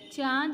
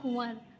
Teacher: उच्चारण जो है वह नाक और मुंह दोनों से होता है